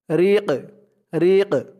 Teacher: র দিয়ে কফ ধরলে যেমন উচ্চারণ হয় এখানে তেমন উচ্চারণ হবে, কারণ এখানে অক্ফ হয়েছে। অক্ফ হওয়ার কারণে এই কফের উপরে পেশটা সাকিন হয়ে যাবে। রিক রিক, কফটাকে একটু ধাক্কা দিয়ে পড়তে হবে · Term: কলকলার হরফ